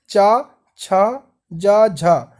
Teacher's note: तो चा वर्ग का उच्चारण स्थान तालु हो जाएगा, क्योंकि आप चा छा बोल के देखिए, चा, छा, जा, झा। तो आप की जो आवाज़ आ रही है वह तालु से टच होकर के आ रही है